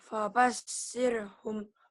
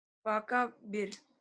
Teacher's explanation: Karena ro-nya mati sebelum ro mati baris bawah atau baris kasroh, maka ro-nya dibaca Tipis. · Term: tarkik